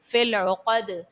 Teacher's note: فی العقد میں دیکھیے گا کہ قوف حرف مستعلیہ کا ہے تو یہاں پر آپ نے اس کو پر پڑھنا ہے، دال بھی حرف قلقلہ کا ہے اور اس کو ساکن کرنے کی صورت میں آپ یہاں پر دال کو خوب ظاہر کرو گے